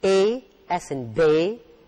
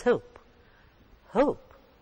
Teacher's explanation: there is a glide from the first vowel to the other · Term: diphthongs